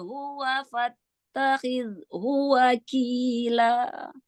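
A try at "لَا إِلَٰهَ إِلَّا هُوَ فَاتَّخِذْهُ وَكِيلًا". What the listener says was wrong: Karena buru-buru nggak menyiapkan nafasnya, disiapkan dulu nafasnya ya, disiapkan dulu nafasnya. Ya, lam sukun, tahan inhirab bainiyahnya sedikit lagi ya. Jadi jangan terburu-buru, selesaikan dulu lam sukunnya. Ya, lam sukunnya. Lalu al-jaufnya Masya Allah sudah bagus yang mad jaisnya ya. Jadi enggak terputus di tengah ya. Sempurnakan lagi lam sukunnya. Boleh wakaf di illa, nanti ulang dari atau tidak dari la ilaha illa huwa.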